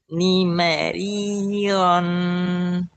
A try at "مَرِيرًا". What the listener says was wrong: Bukan ron tapi ror.